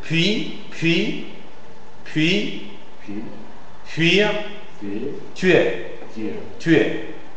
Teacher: une prononciation un peu plus euh sourde en contact avec une consonne sourde précédente